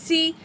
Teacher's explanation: سین میں سیٹی والی آواز ہوگی